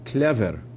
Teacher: And we can see that in standard Ukrainian, both the L and the V are hard, klever. Whereas in Surzhyk, the L is soft, but the V is hard